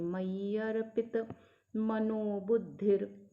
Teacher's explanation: य के बाद जो आघात है उसका अगला वर्ण रफार है छोटी की मात्रा के साथ, ह्रस्व के साथ, तो र य से जोड़ के बोलेंगे